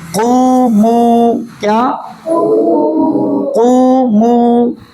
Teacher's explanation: اب قومو کے اندر، قو کے اندر جو واو ہے یہ پر پڑھا جائے گا یا باریک؟ پر پڑھا جائے گا۔ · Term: واو مدہ